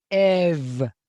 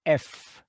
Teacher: same sort of idea except it starts with the epsilon sound so before vowels and voice consonants that's going to be ev and before unvoiced consonants is going to be f